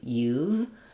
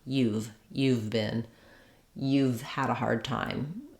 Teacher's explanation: we just take the pronunciation of you and we add the V of have